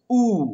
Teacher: देखिए एकदम बिल्कुल कंठ के पीछे से ध्वनि आ रही है